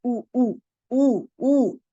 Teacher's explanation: जब आपने पेश पढ़नी है तो प्रॉपर मुंह या होठों को जो है आपने गोल करना है, जो वाकई शक्लन आपको गोल नजर आए। ओ नहीं, ऊ ऊ ऊ ऊ।